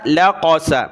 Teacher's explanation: قاف کو موٹا پڑھنا ہے، لام کو کھینچنا نہیں ہے، لا نہیں کرنا بلکہ لام زبر لا۔